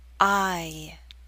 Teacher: It may help you to know that there's a slight Y sound, y, that makes the glide possible, I. This long I sound is usually spelled with an I or IE, although there are other spellings.